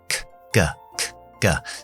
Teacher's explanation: Y el último sonido de los oclusivos es la K. La K es igual que la G. K, K, K, K. Simplemente desactivamos la voz para la K.